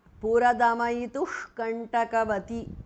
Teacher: Puradamayituhu is a compound word. Visarga changes to jihva muliya.